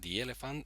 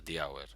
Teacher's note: se pronuncia di cuando va delante de palabra que empieza por vocal, the elephant, o por H muda, the hour.